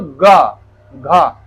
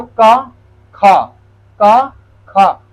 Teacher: तीसरा, चौथा, पांचवा अक्षर आपका सघोष और पहला दूसरा अघोष